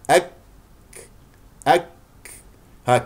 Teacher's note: شده ثم همس شده ثم همس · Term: كاف ساكنه